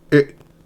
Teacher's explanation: In the previous one, it was in the high front. Now it's in mid-high front, so it goes down. And it's a short and quick it.